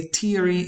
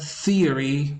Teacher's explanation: with a voiceless interdental fricative sound